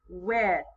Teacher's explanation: It has the TH sound. That sound that kind of makes us stick our tongue out.